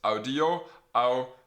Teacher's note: The infinitive, that second form you're given, the second principal part, has a long I before the RE.